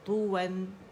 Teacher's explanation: complete rolling ہوگی lips کی